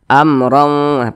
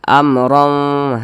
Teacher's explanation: hukumnya ini dibaca jelas tidak berdengung jadi dibaca amrah pendek saja amrah seperti itu kemudian di sini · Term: izhar syafawi, Izhar syafawi